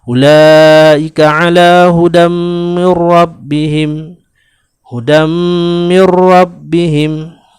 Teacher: Dia dinamakan idgham naqis kerana dia ialah idgham yang disertakan dengan dengung. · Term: idgham ma'al gunnah